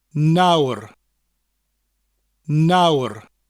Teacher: It's basically the English word now with a rolling R at the end of it.